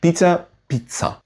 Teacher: Norwegian technically has the letter Z, but it only shows up in foreign words, and even there it's pronounced as S.